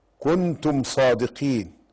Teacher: ميم ساكنة جاء بعدها الصاد فيسمى إظهار شفوي أو إظهارا شفويا.